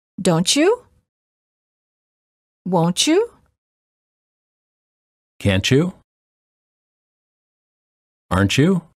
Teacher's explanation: t plus Y is usually pronounced as Chu as in church